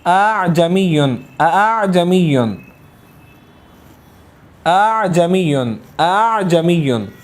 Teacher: لیکن یہاں پر مسئلہ یہ ہے کہ یہاں پر ابتدا میں حمزہ، پھر درمیان میں حمزہ، پھر اس کے بعد حرف عین ہے، تو یہ درمیان والا جو حمزہ ہے ہم اس کو تسہیل کے ساتھ یعنی الف اور حمزہ کے مخرج کے درمیان سے اس کو ادا کریں گے